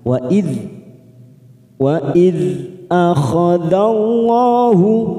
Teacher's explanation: Tetapi jika kita tidak mampu, maka segera mencari tempat waqaf agar tidak terjadi tanafus atau mencuri nafas. Wa idz, ada huruf dal sukun, hati-hati memantul karena bukan qalqalah, kita tahan. Wa idz akhadallahu, ada lam jalalah yang sebelumnya berharokat fathah dha, maka kita baca tafkhim akhadallahu.